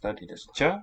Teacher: the sh being an allomorph of s, the letter s, when a palatal follows